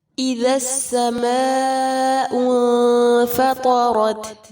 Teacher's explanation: مد متصل ہے، 4 یا 5 حرکات جتنا لمبا کیا جائے گا